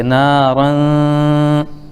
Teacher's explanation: نون کی آواز کو ایک الف کے برابر ناک میں روک کر کے رکھیں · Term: اخفا